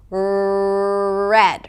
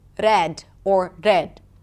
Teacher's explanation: When you trill it, you can't really hold it, it just keeps rolling. But, "red" versus 'rrred' or 'rred'.